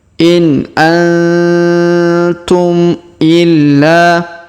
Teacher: Huruf nun sukun bertemu ta maka kita dengungkan dan kita samarkan ya. Dengungnya 2-3 harokat.